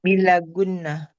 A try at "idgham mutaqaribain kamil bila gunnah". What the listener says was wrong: Hasan, Masya Allah. Barakallah fikum Mas.